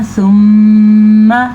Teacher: नाक में आवाज़ चली जाती है और गूंज पैदा होती है, इसे गुन्ना कहते हैं।